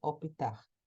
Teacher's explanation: vão escutar também com um I que se agrega